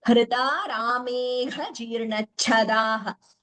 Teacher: gha and cha mahapranas here.